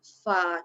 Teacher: Fa kita sebut tak adalah terangkat pangkal lidah. Dia kena tekan dekat bibir je kan. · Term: istifalun